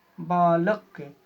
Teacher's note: बालक, ल के पास ज़्यादा बल लग रहा है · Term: स्वराघात